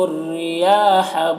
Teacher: را کو باریک پڑھیں گے کیونکہ رائے مشددہ کے نیچے زیر ہے۔ یہاں پر یا میں کھڑا زبر ہے جو الف مدہ کی طرح ہوتا ہے۔